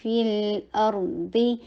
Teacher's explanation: کسرہ، ای کی ساؤنڈ کر کے لام کے اوپر توسط کیجیے، آ کے لیے فتحہ کے لیے جبرا کھولیے اور حمزہ کو شدت کے ساتھ ادا کر کے را کے اوپر توسط کیجیے ، ارضی، ضا کے نیچے کسرہ، ای کی ساؤنڈ اور ہیوی · فا کے نیچے کسرہ، ای کی ساؤنڈ کر کے لام کے اوپر توسط کیجیے